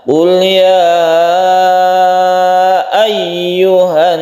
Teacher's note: Idgham syamsiyah al bertemu dengan nun sehingga menimbulkan tasydid nun yang kita baca ghunna atau panjangkan ketika baca hannas, kita tahan.